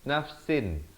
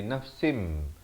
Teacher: kita tukarkan daripada bunyi nun nafsin kepada bunyi mim jadi nafsim. Tapi jangan lupa panjangkan 2 harakat. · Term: hukum iqlab